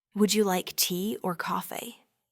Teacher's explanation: My voice will often rise on the first option, tea, and then fall on the second, coffee. It's a natural way to present two alternatives.